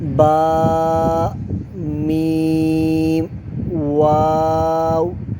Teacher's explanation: یہ تینوں حروف یہ بھی حروف شفویہ ہے، با دونوں ہونٹوں کے تر حصے سے، میم دونوں ہونٹوں کے خشک حصے سے، اور واو دونوں ہونٹوں کی گولائی سے ادا ہوتا ہے